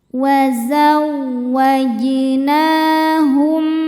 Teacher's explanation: Na hukumnya mad thobi'i muqaddar. Karena ada nun dengan harakat fathah berdiri. Cara bacanya panjang dua harakat.